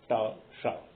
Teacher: दूसरा है मूर्धन्य श तवर्ग। ता जहां से बोला जाता है उसको मूर्धा कहते हैं, उसी जगह पर जीभ लगा करके जब उच्चरित होगा तो ये श होगा